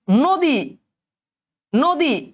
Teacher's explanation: অধনির উচ্চারণ যখন ও এর মত হবে তখন সেটা হচ্ছে সংবৃত উচ্চারণ